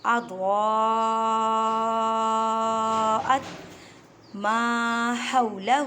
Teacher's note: ح کو ادا کرتے وقت خیال رکھیں کہ حلق کے درمیان سے ادا کریں